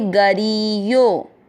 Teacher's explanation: ग री की मात्रा बड़ी लंबा खींचेंगे।